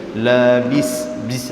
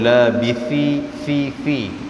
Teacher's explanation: Dia beza tha dengan sin. Kalau sin ni dia bunyi berdesir, dia bunyi macam tu. Kalau tha dia tak bunyi.